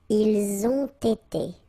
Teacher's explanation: you get first the liaison z, and then you get the t